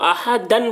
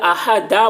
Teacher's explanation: احدن بول کے نہیں ٹھہریں گے، بلکہ احدا بول کے ٹھہریں گے، ہے نا؟ یعنی ایک زبر کے ساتھ الف پڑھا جا رہا، احدا، احدن بھی بول رہے اور آپ ٹھہر بھی رہے ہیں تو یہ غلط ہو جائے گا۔